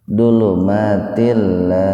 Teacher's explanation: Til idgham bila guna, dulu matil, jadi dimasukkan ke lam tanpa mendengung. Dulu matil, jadi jangan til, jangan begitu.